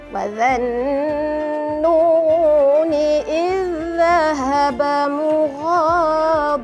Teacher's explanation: Zal bertemu zal atas hujung lidah ke hujung gigi kapak zal ya, jangan baca zal.